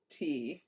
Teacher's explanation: plain unvoiced alveolar stop